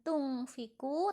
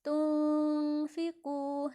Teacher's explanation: Bacanya seperti membaca NG tapi tidak dipantulkan, melainkan agak diseret. Tunfiqu, bukan tungfiku tapi tunfiqu. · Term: ikhfa